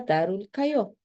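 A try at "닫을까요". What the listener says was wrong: Recuerda que regular de la D no cambia por R. La D queda como D.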